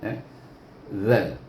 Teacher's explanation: Zal ni belakang hujung lidah, berdepan dengan, bertentangan dengan gigi kacip.